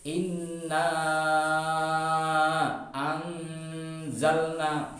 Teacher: mad asli bertemu dengan alif atau hamzah tetapi di lain kata, maka harus dibaca 5 harokat atau 2,5 alif. Inna anzalna, dibaca panjang. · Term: mad jaiz munfasil